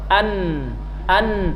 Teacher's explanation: ujung lidah dengan gusi atas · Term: huruf nun